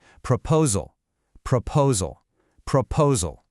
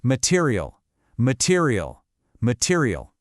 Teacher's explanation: See how the vowels that aren't stressed just collapse into that weak uh sound? The real energy is only on one syllable. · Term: the schwa sound